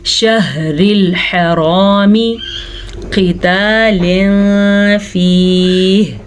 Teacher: قاف کو پر پڑھیں گے کیونکہ قاف ہمیشہ ہی پر پڑھی جاتی ہے، اور تنوین کے بعد فا حروف اخفا میں سے ہے تو تنوین کو ہم چھپے ہوئے غنے کے ساتھ پڑھیں گے.